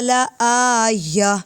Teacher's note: گولتا وقف میں ہا کی آواز دیتی ہے